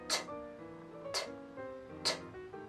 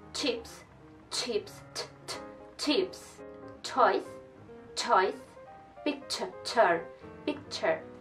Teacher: Es como una combinación del sonido T que vimos anteriormente, t, t, con un sh, sh.